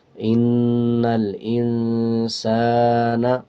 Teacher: سین کے اوپر زبر ہے اس کے بعد الف ہے تو 1 سیکنڈ لمبا کر کے پڑھیں گے